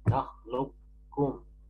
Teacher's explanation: Artinya idgham mahad itu qaf itu jadi kaf murni. Sudah tidak dibaca qaf. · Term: idgham mahdhan